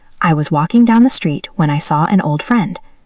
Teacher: Try to feel the difference in speed. I was walking down the street is slow. When I saw an old friend is fast.